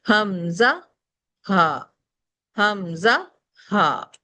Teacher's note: ये दो लेटर्स जो है हमारे बिल्कुल बॉटम से अदा होते हैं इसे अक्स हलक कहा जाता है · اقصائے حلق سے دو لیٹر پڑھے گئے